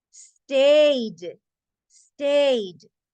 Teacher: Stayed. Stayed. Suena solo una D.